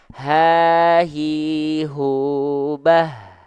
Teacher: Jadi, dia dilafalkan dari pangkal tuh, dari pangkal tenggorokan H besar. Bukan dari dada